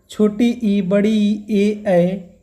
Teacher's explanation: जीभ के आधार पर स्वरों के 3 भेद पाए जाते हैं। अग्र स्वर जो जीभ के अगले भाग से उच्चारित किए जाते हैं